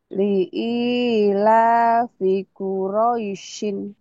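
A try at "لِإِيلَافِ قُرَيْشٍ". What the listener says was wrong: Syinnya masih hutang. Masih masih kurang ya.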